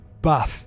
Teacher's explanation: So that long R sound is replaced by a shorter ah sound. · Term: trap bath split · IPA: /æ/